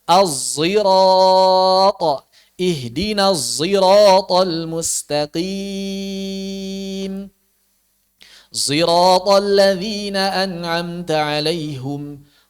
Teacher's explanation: Maka dia dibaca bukan sirat, bukan juga sin, bukan juga sod, tapi pakai zai tebal.